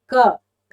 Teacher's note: जीभ नहीं हिलेगी, सीधे सीधे कंठ से उच्चारण हुआ